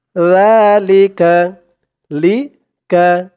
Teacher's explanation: জিহ্বার মাথা ওপরের দাঁতের মাথার সাথে লাগবে জালের উচ্চারণটা করার সময়